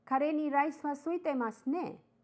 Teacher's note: He could have said mas ka, but he uses ne. Thus, because you are not putting a question mark, the intonation is rising with particle ne